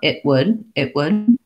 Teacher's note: i actually think i stopped that one not so much with my tongue in the t position but the air gets stopped a little further back